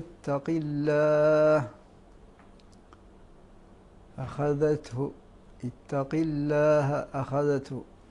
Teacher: نحرص على ترقيق الهمزة المفتوح قبل حرف الخاء